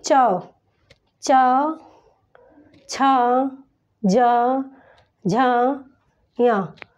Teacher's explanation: इसका उच्चारण स्थान हमारे तालु से हो रहा है। इसको उच्चारित करते समय हमारी जो जिह्वा है वो हमारे तालु से टकरा रही है, इसलिए इसका उच्चारण स्थान तालु से है। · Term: तालव्य